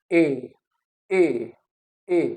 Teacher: simple तो ये क्या है, जो टंग की पोजीशन दैट इज, जो माउथ है that is open mid, mouth is open mid, ठीक है ना, बिल्कुल वाइड ओपन नहीं और क्लोज भी नहीं, in between close and open